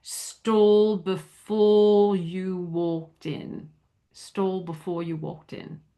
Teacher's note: because the next sound is a consonant, the Y, the R is not rotic, meaning sounded. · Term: not rhotic